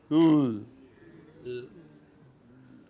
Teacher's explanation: when you say l, the sides of the tongue fold. You know? Imagine some sheet of cloth, some curtain, okay, which is still in the contact in center, but it folds like this.